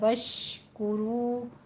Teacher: شین پہ تفشی کی آواز آئے گی، اور کاف کے اوپر ضمہ ہے، ہونٹوں کو گول کیجیے، رو میں بھی دونوں ہونٹوں کو گول کرنا ہے۔